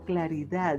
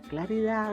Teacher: la d se pronuncia con la parte posterior de la lengua